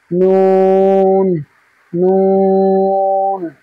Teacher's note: নুনের মাখরাজ হচ্ছে জিভের আগা এবং তার বরাবর উপরের তালুর সাথে, জিভের আগা এবং তার বরাবর উপরের তালুর সাথে লাগিয়ে উচ্চারিত হয় নুন, নুন।